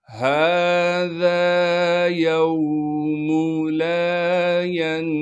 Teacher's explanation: طا کو موٹا کر کے پڑھنا ہے کیونکہ طا موٹے حروف میں سے ہے